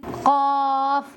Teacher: زبان کی جڑ اوپر کے تالو کے نرم حصے سے مل کر ادا ہوتا ہے۔